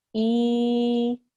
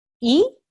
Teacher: You have your vertical kasra, which is pronounced for 2 seconds, as opposed to the 1 second of a normal kasra.